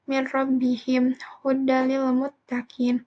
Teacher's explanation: dibacanya tanpa dengung yaitu jika bertemu dengan huruf lam dan ro